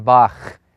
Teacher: And so it's like the CH in Bach. It's got that kind of phlegmy guttural sound in it. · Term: Chet